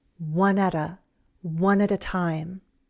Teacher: We don't say a, we use the schwa sound